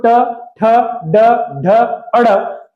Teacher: आपका जीभ का अग्र भाग वहां पर जाकर टकराता है तो ट ठ ड ढ अड़ ये मुर्धा में जाकर टकराते हैं इसलिए इसे मुर्धन्य व्यंजन कहा जाता है